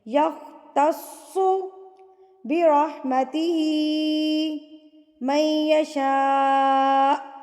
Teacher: یؤتیہ من یشاء واللہ واسع علیم. یختص تسو صاد کے اوپر تشدید ہے تو مضبوطی سے آپ اس کو پڑھیں گے